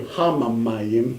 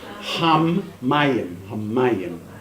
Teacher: Okay, now don't do hamamayim, but just hammayim, hammayim. Just hold the mem for a little bit longer.